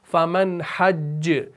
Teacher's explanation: जब आप हज्ज पर रुके ना तो जीम आ गया और ये मुतहर्रिक भी था और तजदीद के साथ भी था, तो ये कलकला आपका कलकला अकबर, स्ट्रॉन्गेस्ट कलकला कहलाएगा